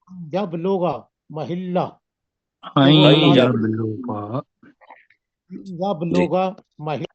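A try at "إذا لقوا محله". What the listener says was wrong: نہیں آئیں جب لوگا محلہ، آئیں کی آواز نہیں آئی۔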